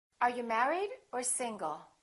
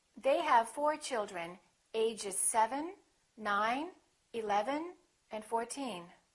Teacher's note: rising intonation when you're not finished speaking and you have something more to say, and then falling intonation at the end of your sentence.